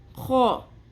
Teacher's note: خو کھردرا خراش کی آواز آئے گی